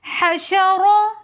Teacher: حشا، رو زبر رو، حشرو۔ رو کے اوپر زبر ہے تو اس لیے اس رو کو ہم موٹا کر کے پڑھیں گے